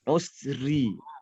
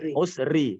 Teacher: Membacanya dengan getaran yang di ujung saja. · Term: ro tarkik